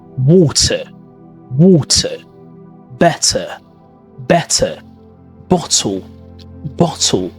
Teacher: In standard British English, which is known as received pronunciation, the letter T is clearly pronounced.